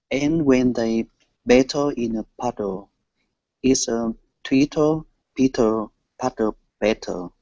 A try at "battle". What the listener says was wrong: hear how it's a D, it's a dull sound, not a tull sound. Dull. Just like in puddle.